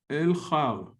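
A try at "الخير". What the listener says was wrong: No, but you have a ya here. Yeah, and you have to spell it. Al-khayr, nafon.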